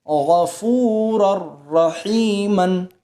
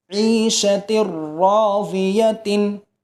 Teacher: را اور لام کی صورت میں گنہ نہیں ہوگا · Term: ادغام